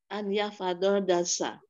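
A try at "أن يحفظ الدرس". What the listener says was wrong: Lamnya masih kedengeran, Ibu. Lamnya jangan kedengeran. Lamnya jangan kedengeran, langsung ke dal. An yahfazod darsa. Kan disambung.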